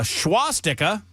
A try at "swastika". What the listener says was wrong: There's no H there.